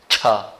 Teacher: आपकी जिह्वा एकदम से तालु में टकरा रही है, और जब इसका उच्चारण करेंगे तो जिह्वा को थोड़ा अलग रखेंगे छ।